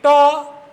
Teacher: ट इसका उच्चारण मूर्धा से होता है।